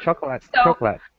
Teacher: And I cut off O. Yeah, the second O is just totally thrown away. We don't even pronounce it at all.